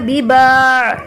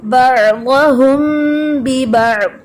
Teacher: لمبا نہیں کرنا کیونکہ عین ساکن ہے, یہاں پہ کوئی الف مدہ نہیں ہے, کھڑا زبر نہیں ہے, ٹھیک ہے.